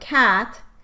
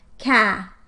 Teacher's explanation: the t would be removed from the syllable coda and the word would be pronounced ka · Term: final consonant deletion